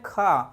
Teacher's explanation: तो खा में वायु ज़्यादा निकल रही है और समय ज़्यादा लग रहा है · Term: महाप्राण